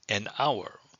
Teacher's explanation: The H is silent, so the word hour begins with a vowel sound.